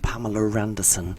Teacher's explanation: they put an r in the middle where there's no R